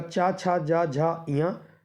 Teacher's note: चा वर्ग के तालव्य कहलाते हैं